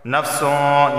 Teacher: نفسوں، یہاں اخفا کا غنہ ہوگا کیونکہ تنوین کے بعد شین حروف اخفا کا آ گیا، زبان کے اوپر کے تالو سے نہیں لگے گی اور آواز ناک سے آئے گی